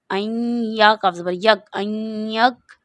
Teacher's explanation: نون ساکن کے بعد یرملون کا قاعدہ ہے، یہاں پر یا یرملون کا لفظ ہے تو اس کو غنہ کر کے پڑھیں گے